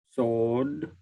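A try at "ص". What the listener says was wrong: So make it heavier. Sod. Sod.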